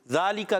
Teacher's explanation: काफ का मखरज जबान की जड़ तालुका का नरम हिस्सा